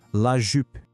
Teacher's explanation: O desafio aqui é fazer o biquinho para falar o U do francês. É um som entre o I e o U do português.